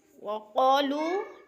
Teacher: وقالو جو ہے قوف موٹے حروف میں سے ہے، پر کر کے پڑھیں گے قوف کو، اور او پہ الف مدہ بھی ہو رہا ہے، الف مدہ کو ایک الف کے برابر کھینچ کر پڑھتے ہیں، اور لو پہ وہ مدہ ہے، کیونکہ وہ ساکن سے پہلے لام کے اوپر پیش ہے، تو وہ مدہ اس کو بھی دو حرکات یعنی ایک الف کے برابر کھینچ کر پڑھنا ہے۔